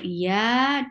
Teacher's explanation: the middle of your tongue is lifting towards your palate, but it's not touching it. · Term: Arabic ya